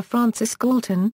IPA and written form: ˈfrɑːnsɪs ˈɡɔːltən (Francis Galton)